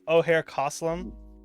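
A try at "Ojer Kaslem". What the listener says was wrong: I don't think the O is pronounced like an O. Like it's like Oaxaca, like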